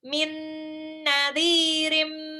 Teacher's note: Nunnya lebur ke nun, ditahan 2 sampai 3 harokat. Biar gunnahnya terdengar jelas. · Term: idgham bil gunnah